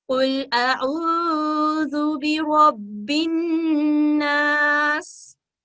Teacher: नून मुशद्दद, इस पे हम 2 सेकंड का वक्त देंगे। काफ हरूफ तफहीम है, इसको मोटा अदा करेंगे।